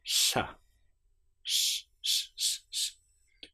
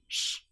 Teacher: With the tongue further back, sh, teeth not too close together.